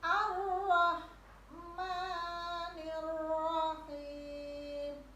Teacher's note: Rahim sama dari tenggorokan bagian tengah